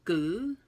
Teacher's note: Fun fact, so the V as a tonal marker at the end, if you follow it, it actually kind of dips. The word kind of dips in regards to the pitch or the tone. And so gu, it kind of does that, but it's short and it goes back up.